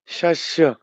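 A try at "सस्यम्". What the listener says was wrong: শস্য নয়, এখানে দন্ত স, সস্যম, সস্যম।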